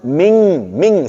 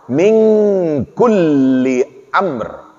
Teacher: jangan ada bunyi nun lagi. Ming, sengau.